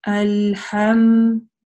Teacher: Мы заканчиваем, легонько прижимая две губы, потому что махрадж, буква мим — это губная буква, да, губы, две губы.